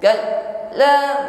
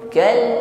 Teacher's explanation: Huruf lam sifatnya tawassut. Jadi walaupun dia ditekan hurufnya, tapi jangan sampai putus bunyinya.